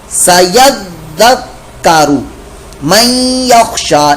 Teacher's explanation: نون ساکن کے بعد یا حروف یرملون میں سے آ گیا, لہذا یہاں پر ادغام کا قاعدہ کرتے ہوئے ہم غنہ کریں گے